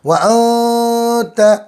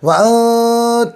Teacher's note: नून साकिन की आवाज़ को नाक में छुपा कर पढ़ेंगे